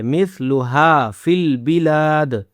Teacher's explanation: ہا کو کھینچنا ہے، اس کے بعد لام کو بھی کھینچنا ہے